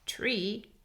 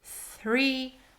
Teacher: different initial sounds three is T the tongue comes forward tree T is a t sound and the tongue does not come forward